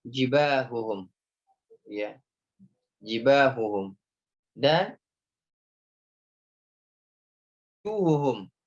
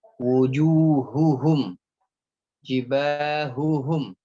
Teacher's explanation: Jadi dijelaskan huruf H dia termasuk huruf yang lemah dan cenderung berbunyi samar.